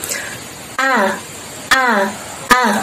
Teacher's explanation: ketika kita mengucapkan huruf hamzah ini tidak ada nafas yang keluar dari mulut kita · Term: jahr